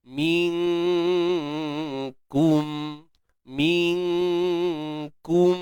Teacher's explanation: Minkum, nun mati jumpa kaf tuan-puan, ikhfa hakiki, kita sembunyikan nun di sisi huruf kaf dengan dengung yang nipis juga.